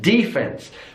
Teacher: So it's on the first syllable, and that D is really pronounced.